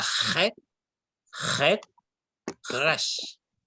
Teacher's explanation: Entonces, mire, la clave para pronunciar la Gesh como una R francesa es que usen la garganta.